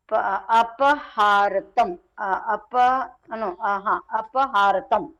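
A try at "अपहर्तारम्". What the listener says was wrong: Apahartaram. This Ra is there, na? So this Refa is this is read before.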